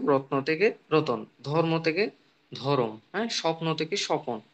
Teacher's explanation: এই যে দুইটা ব্যঞ্জন ধ্বনি আমরা দেখতে পাচ্ছি, এর মাঝখানে একটা স্বরধ্বনি আগমন করছে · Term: মধ্য স্বরাগম